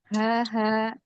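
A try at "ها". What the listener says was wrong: Iya, jadi jangan ada hamzah. Nanti latihannya dipanjangin dulu. Kayak ha, kan dia nggak ada apa sandaran apa maksudnya ha ya udah dia setelah ha ya lepas gitu. Dia nggak apa namanya nggak mampir gitu, nggak ngerem ke hamzah yang ini.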